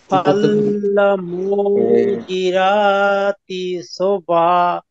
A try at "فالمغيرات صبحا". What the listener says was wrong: ভাই রা হবে না, র হবে, ঠিক আছে?